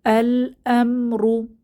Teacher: এখানে র কে মোটা করে পড়বো র হচ্ছে র এর উপরে পেশ বা দম্মাহ আছে তো র